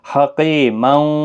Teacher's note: حکیم حکیمن نہیں، اور جب ملائیں گے تو تنوین کے بعد یرملون کا واو آیا ہے، ادغام مع الگنہ ہوگا، گنہ کے ساتھ پڑھیں گے